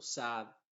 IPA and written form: sæd (Sad)